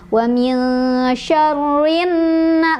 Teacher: alif lamnya tidak dibaca, melainkan kita langsung masukkan ke huruf syamsiahnya, ke nunnya ya. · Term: alif lam syamsiah